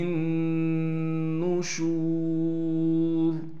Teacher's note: وَكُلُوا مِن رِزْقِهِ وَإِلَيْهِ النُّشُورُ ہا کو نون سے ملائیں گے، نون پر تشدید ہونے کی وجہ سے غنہ کریں گے، شین کے بعد واو مدہ ہونے کی وجہ سے شین کو ایک الف کی مقدار کھینچیں گے